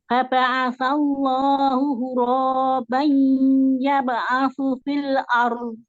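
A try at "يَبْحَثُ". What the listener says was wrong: Ya bahasu, bukan asu. Hasu.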